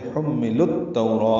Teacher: حملو میں میم مشدد پہ غنہ ہے، لو واو مدہ ہے، لیکن التوراہ کا حمزہ عارضی ہونے کی وجہ سے لام کو التوراہ کی تا سے ملا دیں گے تو حمل التوراہ ہو جائے گا. لام کے بعد واو الف، الف لام یہ نہیں پڑھے جائیں گے، ادغام شمسی ہوگا. تو واولین ہے، نرمی ہونٹوں کی نا تمام گلائی سے ادا کریں گے اور معروف طریقے سے پڑھیں گے.